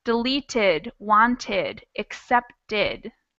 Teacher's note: So once you put them in the past tense, they're going to sound like deleted, wanted, accepted. They're going to have a whole extra syllable for that ED sound.